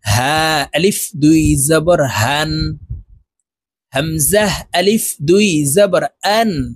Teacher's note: হা হামজাহ এই দুইটি হরফ হলকের শুরু থেকে উচ্চারণ করব।